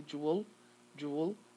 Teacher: it's going to link the sound w and the sound l